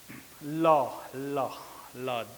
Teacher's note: इकर में हमिन कर जे जीभ है वो तालू के छुअत है, लेकिन जे हवा है वो दुइयों बगल से बाहर निकले लायक है। ल, ल, ल बुझात है कि दुइयों बगल से हवा निकले लायक है। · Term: पार्श्विक